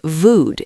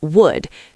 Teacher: the W sound, learners often replace it with V, saying vood instead of would.